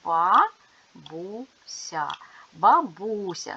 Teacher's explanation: с - м'який звук тому що буква я яка стоїть після приголосного пом'якшує його